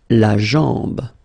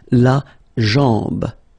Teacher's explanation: A-M, when you combine these two, basically it's just like A-N, so it's nasal and it's en.